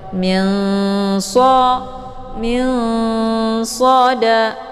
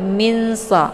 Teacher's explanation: kalau dibandingkan tingkat kesamaran dan dengungan itu seimbang jadi tidak lebih ke dengung dan juga tidak lebih ke samar jadi jangan dibaca mings ya ataupun mins tapi min min SH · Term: Ikhfa